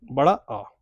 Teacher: बड़ा आ एकमात्र ऐसा स्वर है जिसमें मुख पूरा खुलता है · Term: विवृत स्वर